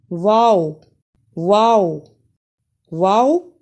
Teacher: को गोल करने से यह लफ्ज अदा हो जाएगा वाओ यानी दोनों होठों के ना तमाम गोल होने से वाव अदा होता है · واو واو کو ادا کرتے ہوئے دونوں ہونٹوں کو گول کرنے سے یہ لفظ ادا ہو جائے گا۔ واو یعنی دونوں ہونٹوں کے ناتمام گول ہونے سے واو ادا ہوتا ہے